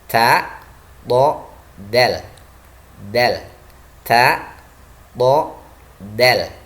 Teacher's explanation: Ujung lidah dengan pangkal gigi seri yang atas adalah tempat keluarnya huruf ta, huruf to, dan huruf dal.